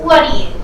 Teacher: combining the T and D causes you to delete the T in what and just say the D from do.